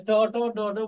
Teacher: হ্যাঁ, এই যে রাশি আছে ট ট ড ড মূর্ধন্য, এইগুলো উচ্চারণ করার সময় আমাদের জিহ্বাকে মূর্ধায় হিট করে, আঘাত করে, তাই এটাকে বলা হয় মূর্ধন্য ধ্বনি বা বর্ণ।